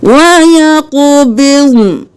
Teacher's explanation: ضاد کو بھی ساکن پڑھنا ہے موٹا کرتے ہوئے، نون کو بھی ساکن پڑھنا ہے